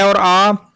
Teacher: कंठ में आता है अ और आ